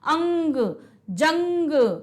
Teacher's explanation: अनुस्वार में सिर्फ और सिर्फ जो है नाक से निकलेगी, और उच्चारण कुछ जोर से किया जाता है, और क्या, थोड़ा सा ताकत लगा के जोर से, जैसे बोलेंगे अंग, जंग, है ना, पलंग।